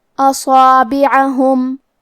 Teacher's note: آخری میں میم ساکن ہے، یہاں میم کا حکم ہے اظہار شفوی تو ہم حرف المیم کو ظاہر کریں گے اور بغیر غنہ سے یہ حکم کو ادا کریں گے